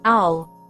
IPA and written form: aʊl (owl)